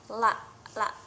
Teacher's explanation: ketika kita mengucapkan huruf la, pita suara kita itu bergetar. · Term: huruf yang bersuara